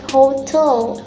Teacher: This rule has an exception as well. For noun, the word hotel, syllable hotel, and stress placed in the last syllable, which is tel